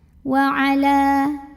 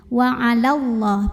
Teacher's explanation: Tapi jika tidak berhenti, mad tabi'i ini gugur, lamnya pendekin aja. Namanya takhallus bil hadfi.